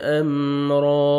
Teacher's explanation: را کو جب سٹاپ کریں گے تو الف مدہ ہو جائے گا، را زبر الف، 1 سیکنڈ آپ نے کھینچنا ہے را کو اور را کو موٹا کر کے پڑھیں گے، را کو زبر ہے۔